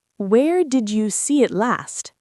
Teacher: Notice how the emphasis goes on the word last. That is the most important piece of information we need.